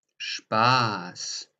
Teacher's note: So you hear clearly with Spaß that the vowel here, the A, is long. Spaß. Now that is because there comes the SZ at the end, or vice versa.